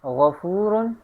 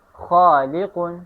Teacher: تیسرا نمبر ادنائے حلق، اس سے بھی 2 حروف نکلتے ہیں، اور وہ 2 حروف یہ ہے غین اور خا